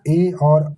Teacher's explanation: ए और ऐ का उच्चारण स्थान क्या है? कंठ और तालु है। केवल कंठ नहीं है या केवल तालु नहीं है।